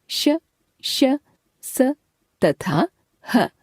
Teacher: उष्म इनके उच्चारण में मुख से गर्म हवा निकलती है